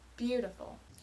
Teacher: the word beautiful follows the long short short stress pattern